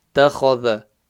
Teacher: Ta, empty mouth. Kha, full mouth. Thal, empty mouth.